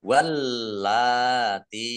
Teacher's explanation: lamnya dibaca double, ya, ada tasdidnya.